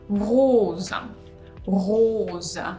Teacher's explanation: When we pronounce O fermé, closed O, we pull our tongue back and we close our mouth. And also make sure you pronounce Z, rose, and not S.